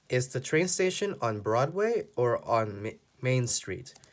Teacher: here the voice goes up and the voice goes down because there are two choices because of the word or do you want this one or